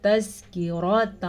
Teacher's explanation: را کو ہم پر پڑھیں گے کیونکہ را کے اوپر زبر ہے. کاف کو ہم نرمی سے پڑھیں گے کیونکہ یہ باریک کاف ہے.